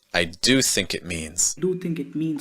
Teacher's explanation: Notice that there should be a held T sound between it and means.